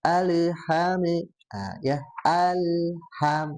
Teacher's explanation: huruf lam ini dia biasanya kesalahan yang terjadi itu suka memantul